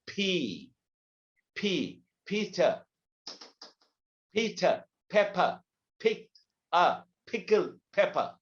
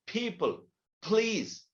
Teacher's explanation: the first P is pronounced with an aspiration, with a little bit of explosion